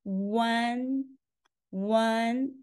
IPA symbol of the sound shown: wan